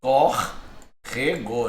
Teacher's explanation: Sílaba tônica aqui é a antepenúltima. Então, proparoxítona, toda proparoxítona será acentuada.